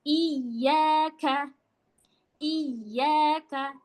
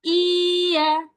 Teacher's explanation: Iyaka itu ya bertasydid. Ketika ya bertasdid, maka harus kita tekan